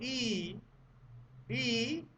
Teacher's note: फिर से बोल के देखो, ई। ई, जीभ का अगला हिस्सा उठेगा, उठने का प्रयत्न करेगा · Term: अग्रस्वर